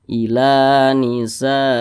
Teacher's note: Mad tabi'i panjangnya itu 2 harakat atau kira-kira 2 ketukan